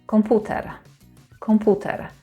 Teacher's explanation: So pu is where we put the stress. Komputer, 3 syllables.